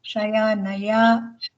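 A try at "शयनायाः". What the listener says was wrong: Visarga, I didn't hear the Visarga. Shayanayaha.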